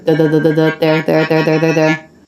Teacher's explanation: it's not stressed you can get by with not bringing your tongue tip through you can just touch the backs of the teeth with your tongue rather than taking the time to bring it through there there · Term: voiced th